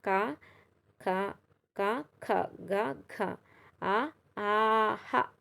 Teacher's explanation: కంఠంతో పలికే అక్షరాలు కంఠ్యాలు